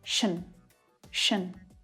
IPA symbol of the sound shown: ʃən